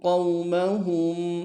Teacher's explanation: ان یأمنوکم وَيَأْمَنُوا قَوْمَهُمْ، وَيَأْ میں جھٹکا دیں گے، نو میں واو مدہ ہے کہ انداز میں کھینچیں گے، قوم میں واو لین ہے بغیر کھینچے پڑیں گے